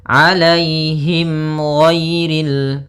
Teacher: Kemudian him di sini ada huruf ha besar yaitu ada mim mati bertemu dengan huruf ghain maka dinamakan dengan izhar syafawi maka harus jelas suara mimnya